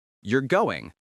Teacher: You're going sounds like a statement because the voice falls. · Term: falling intonation